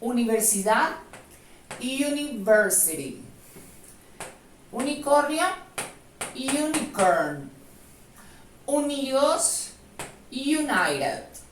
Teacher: la U en estas palabras se pronunciará tal cual suena en el alfabeto del inglés, como U, sí, como una I con una U